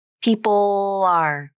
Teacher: The most important part of the Dark L is the first part, the tongue pulling back and down, narrowing, and the tongue tip down.